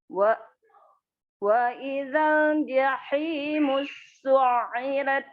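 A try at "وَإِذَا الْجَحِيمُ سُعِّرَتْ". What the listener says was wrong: Jahimusu. Di sinnya enggak di tasydid. Jahimusu. Ya, di ainnya, saknya enggak. Jahimusu irat. Enggak jahimus. Enggak mut. Jahimusu irat.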